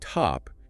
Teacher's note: In the word top, you pronounce it with a little puff of air. It's aspirated, T-A.